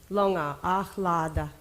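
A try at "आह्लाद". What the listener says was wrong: Second is long.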